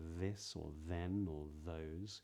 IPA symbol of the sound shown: ð